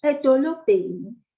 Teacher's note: The BH is blown out, as in boy in English, or ball.